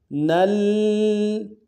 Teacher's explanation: نون کو آگے لام کے ساتھ ملانا ہے، لام کے اوپر تشدید زور دیں گے۔